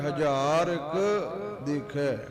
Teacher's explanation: ਜਿਵੇਂ ਕਹੀਦਾ ਹੈ ਨਾ, ਰਤੀਕ ਚੀਜ਼ ਦੇ ਦੇ, ਇਦਾਂ ਹੀ ਹਜ਼ਾਰਕ, ਹਜ਼ਾਰਕ ਕੱਕਾ ਥੋੜਾ ਜਿਹਾ ਨਾ ਅੱਡ ਕਰਕੇ ਪੜਨਾ ਹੈ, ਹਜ਼ਾਰਕ ਦੇਖੈ।